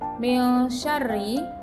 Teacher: Min syarri dibaca samar antara bunyi n dan bunyi eng dan dinamakan ikhfa.